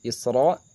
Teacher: Isra ini masuk ke dalam ro tafhim, dibaca tebal karena berharokat fathah.